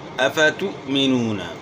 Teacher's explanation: حمزہ ساکن ہے، اس میں جھٹکا ہوگا